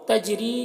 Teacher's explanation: تجری جیم میں قلقلہ ہوگا. ری میں را کو پر باریک پڑھنا ہے اور یا مدہ ہے یہاں پر.